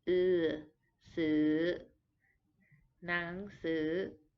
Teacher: this vowel sound we do not have in English. It is kind of a mix between an E and a U sound. And to make it, you have to keep your teeth su.